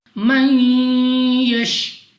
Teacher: نون ساکن کے بعد یا حروف یرملون میں سے ہیں, ادغام کا قاعدہ ہے, یہاں پر بھی ہم نے غنہ کرنا ہے. من یش, را کے نیچے زیر تو را کو باریک پڑھیں گے.